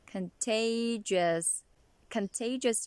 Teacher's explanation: word contagious there are several syllables as you've noticed contagious and the primary stress is on the second syllable